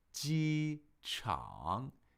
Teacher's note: the first tone is high, steady, flat, unchanging, and the third tone is falling and rising. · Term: first tone, third tone